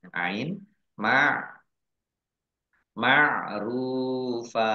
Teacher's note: gunnah masuk dengan mendengung yaitu mendengung mim ditandai mimnya ada tasdidnya mim tasdid dibaca mendengung ditahan dua harokat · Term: idgham bi gunnah